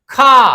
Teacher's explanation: स्पर्श है, कंठ है, अघोष है और महाप्राण है